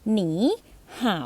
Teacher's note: เมื่อเสียง3กะเสียง3มาเจอกันให้อ่านเป็นเสียง2กับเสียง3